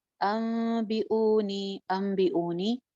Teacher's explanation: नून की आवाज मीम में चेंज हो जाएगी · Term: इक़लाब